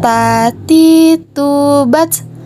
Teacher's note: ada udara yang mengalir ketika melafalkan huruf ta